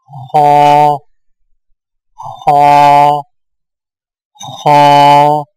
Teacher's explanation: آئیے موٹی آواز والے حروف کی ادائیگی کی پہچان کریں اور ان کے نقشے جات پر توجہ مرکوز کریں۔ خ کی ادائیگی میں زبان کی جڑ کو تالوں کی طرف بلند کریں